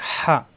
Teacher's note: কণ্ঠনালীত চাপ দিয়ে হা